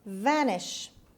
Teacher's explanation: The stress is on the first syllable. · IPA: /ˈvænɪʃ/